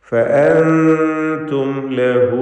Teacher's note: സാക്കിനത്തായ മീമും ശേഷം ലാമും ഇൽഹാർ ഷഫവി മണിക്കാതെ സാക്കിനത്തായ മീമിനെ വെളിവാക്കി ഉച്ചരിക്കുക.